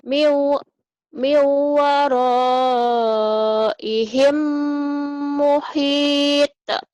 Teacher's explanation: Mim mati ketemu mim idgham mimi ditahan.